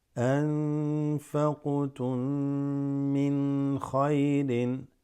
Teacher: this qaf has a qalqala, the noon there, followed by fa, is slightly ikhfa.